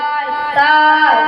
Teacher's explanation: জিহ্বার আগা সামনের উপরে দাঁতের গোড়া সাইডে লাগিয়ে তা উচ্চারিত হয়